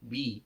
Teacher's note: Bi itu huruf ba, huruf dua bibir, tempelkan dua bibirnya kemudian dikasrohkan. Bi. Nah, adapun kaidah membaca kasroh itu dengan menarik bibir bawah ya, menarik ke bawah bi gitu ya.